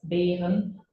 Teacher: The High German R in berries, Beeren, comes from the back of your mouth, but the Low German R is rolled up into the front with your tongue, not the throaty growl.